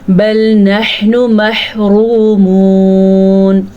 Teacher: बल नहनु महरूमून, नहनु हा के तलफ़्फ़ुज़ का ध्यान रखना है और महरूमून हा का तलफ़्फ़ुज़ भी ध्यान से पढ़ना है और रॉ को भी पुर पढ़ना है क्योंकि वाव साकिन से पहले रॉ के ऊपर पेश आई है